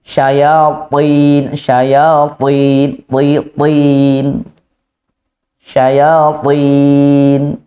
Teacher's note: Kita mengangkat kok pangkal lidah syayatin, tetapi tidak itbaq, maka kurang tebal. Ya terangkat pangkal lidahnya, ya menempel tengah lidahnya, itbaq, sehingga hurufnya semakin kuat.